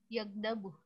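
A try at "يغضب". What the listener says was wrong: Yagdo. Do ya bukan yagda. Yagdo. Yagdo.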